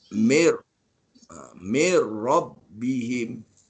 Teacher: Jadi min kalau jumpa ro, masukkan ro jadi mir. M-I-N jadi M-I-R. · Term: idgham bila guna